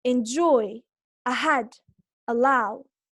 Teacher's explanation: Notice now that in other words with two syllables, the second syllable is stressed